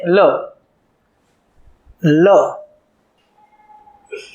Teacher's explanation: લ બોલતી વખતે જીભ એ તાળવાને સ્પર્શ કરશે. જીભ એ તાળવાને સ્પર્શ કરશે અને હવા જમણી અને ડાબી બંને બાજુથી બહાર નીકળશે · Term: પાર્શ્વિક વ્યંજન